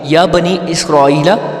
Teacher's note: دیکھیں نون ینی پہ جو مدہ ہے وہ باریک مدہ ہے، اس کو ہم تھوڑا سا ہم جا کے مطلب 3 الف کے برابر اس کو لمبا کریں گے، اور اسرائیل الف پہ جو مدہ ہے وہ موٹی مدہ ہے، تو اس کو ہم 3 سے لے کے 5 الف کے برابر تک ہم اس کو لمبا کریں گے